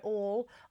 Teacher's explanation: All is a funny word to sing because we've got the L that wants to close, right? All.